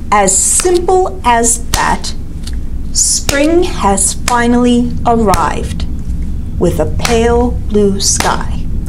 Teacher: it has 2 beats in the first line, 3 beats in the second, and 2 beats in the third.